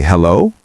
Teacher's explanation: Then you can say hello with a rising tone, like a question. It sounds curious, but still polite.